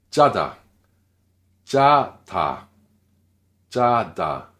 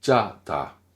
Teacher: Le sangjiut initial, tendu, sec, brusque.